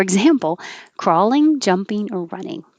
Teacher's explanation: example looks like ex but it has a z sound